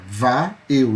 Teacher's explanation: o vá é tônico e o eu é tônico